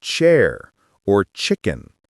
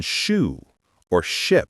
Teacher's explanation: The tongue position is almost the same, but for ch, you block the air for a moment and then release it suddenly. That small burst of air makes the ch sound sharper than sh.